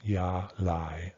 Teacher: these 2 are level tones